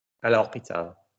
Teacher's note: you don't pronounce the H, so therefore it's a vowel sound